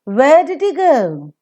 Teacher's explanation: If doing is the nucleus, that will receive a falling tone.